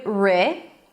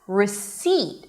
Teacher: The P is not pronounced. So we begin with re it's an R sound and the E as in sit. Re you can also drop it to awah. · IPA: rɪˈsiːt